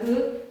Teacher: 혀꼬리가 목구멍을 막는 모양